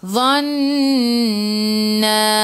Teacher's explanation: Nun ada sabdu, tekan ke dalam nun dan dengung 2 harakat. Wajibul gunnah, wajib dengung.